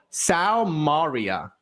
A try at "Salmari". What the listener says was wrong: you added you added an a to it